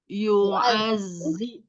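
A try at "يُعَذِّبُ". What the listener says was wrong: Jangan yu'azzi. Tidak yu'azzi. Zal itu ujung lidahnya ada di ujung gigi seri bagian atas. Yu'azzi.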